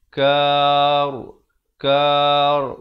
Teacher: Wasabbih, bukan wasabbih tapi bih, wasabbih bil ashyi, bil ashyi, tekankan ya itu bersabdu, ashyi wal ib, ada lantunan di sini, qalqalah kar, dan ra ini jadi tebal